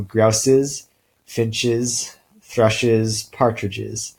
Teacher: When we add it on to something like grouse or finch or thrush, it becomes a schwa followed by a voiced sound. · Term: allomorph